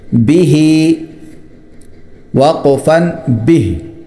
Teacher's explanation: با کو مختصر کریں گے اور ہی کو کھینچیں گے